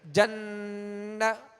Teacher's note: من یقول، من ورق الجنت، اب نون پر زبر ہے تو آواز اور منہ کھول کر مگر کھینچیں گے نہیں، جنتی، تا کے نیچے زیر ہے، آواز کو گرا دیں گے اور معروف طریقے سے پڑھیں گے مگر کھینچیں گے نہیں